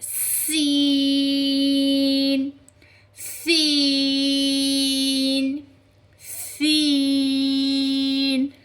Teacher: جو سین کا مخرج آپ نکالتے ہیں وہ اس طریقے سے نکلے گا جیسے زبان کی نوک اور سامنے کے اوپر نیچے والے 4 دانتوں کے کنارے سے ادا ہوتے ہیں